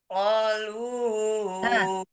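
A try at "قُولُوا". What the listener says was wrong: bukan kalu, ku, kulu, harokatnya ya, hati-hati.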